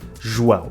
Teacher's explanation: in Portuguese, we use the J to represent the sound /ʒ/ · Then comes an O that we read /u/, which for a native Spanish speaker doesn't make any sense, and finally the trickiest part: the nasal diphthong “ão”, which is very unintuitive because the A reads Ã and O reads U: that is, it is not Á-O but Ã-U. · a parte mais complicada, o ditongo nasal ão, que é muito pouco intuitivo porque o A lê-se ã e o O lê-se U. Ou seja, não é AO, mas sim ão.